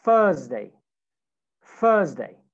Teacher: Okay, no TH, it's fe, Thursday.